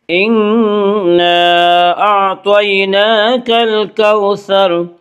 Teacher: انا نون مشدد غنہ ہوگا، غنہ کی مقدار 1 الف ہے